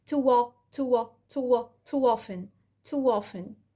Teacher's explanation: ظهرت صوت ال W أهو وخفيت صوت الهمزة أو الجلوتال stop